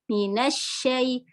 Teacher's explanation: Nah, di sini untuk ro tasdid, kalau tadi yang lam tasdid itu sifatnya bainiyah setengah mengalir, bil, sedangkan shin ini rohwa, minash mengalir